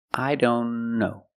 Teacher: Link the N with the other N. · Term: T in don't is silent